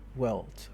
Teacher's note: So this long vowel has changed in this case, and because French lacks an R-colored central vowel, the whirl, speakers usually approximate it using a back vowel, and that's the O vowel.